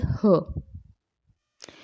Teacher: आती श्वास वायु तीव्र वेग से स्वर यंत्र मुख पर संघर्ष उत्पन्न करती है, तो स्वर यंत्रमुखी कहते हैं, स्वर यंत्रमुखी।